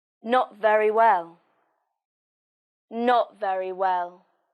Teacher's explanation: the stress is on not and well not very well and remember the falling pitch